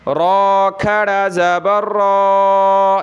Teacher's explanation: را پر کھڑا زبر ہے تو اس کو موٹا کریں گے